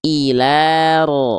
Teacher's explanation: Getarannya tetap ada tapi enggak terlampau berlebihan ya. Jangan bukan berarti juga dihilangkan disamarkan. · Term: takrir